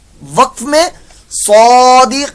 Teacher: جنہوں نے مدات کا سبق پڑھا ہے سبق نمبر 17 اس کو معلوم ہے کہ جب حروف مدہ کے بعد یہ حروف مدہ، یہ دیکھیں یا ساکن سے پہلے زیر یا مدہ ہو گیا اور آگے یہ نون کے اوپر زبر ہے، لیکن جب ہم یہاں وقف کریں گے تو یہ زبر جو ہے یہ ساکن کے اندر چینج ہو جائے گی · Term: مد عارض